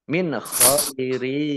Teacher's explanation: nun sukun bertemu dengan huruf kha, bacaan izhar dibaca jelas.